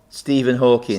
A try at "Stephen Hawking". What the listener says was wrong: Stephen Hawking. Hawking, There's no S on the end, it's Hawking. Hawking, Stephen Hawking. It's not Hawking's.